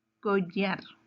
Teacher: Tiene 2 sílabas y su sílaba tónica está en la última sílaba, entonces es una palabra aguda.